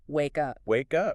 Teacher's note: with the k sound blending into the uh sound so it just flows together it flows together I'm starting to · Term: connected speech